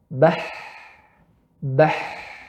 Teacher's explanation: Pita suara terbuka. Udara keluar, tidak bergetar tenggorokan.